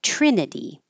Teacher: This vowel is I, like it, so the tongue is always going to be a little bit lower.